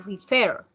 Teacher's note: Refer tiene acento en la última sílaba y le duplicamos la consonante y le agregamos ed, ¿sí?